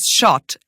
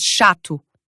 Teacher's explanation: This vowel is similar to English's as in dog or father. The Portuguese vowel, though, is a bit more forward in your mouth, so your tongue is going to be about halfway towards the American a sound.